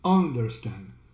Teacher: The U here becomes a schwa, which almost sounds like an a.